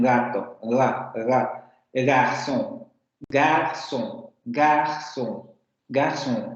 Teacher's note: oclusión en la zona del velo del paladar del velo del paladar y luego explosión